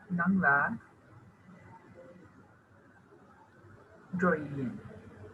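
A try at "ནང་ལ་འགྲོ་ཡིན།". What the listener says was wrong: Perfect. Very good. Joyin or Jogiyin. Same.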